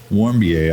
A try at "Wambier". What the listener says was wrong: Well, if you're gonna say it, you gotta say it right. You don't. The R is silent. Wambier.